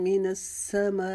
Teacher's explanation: من السماء کے اوپر جو مد ہے اس کو ہم 6 انگلیاں لمبا کریں گے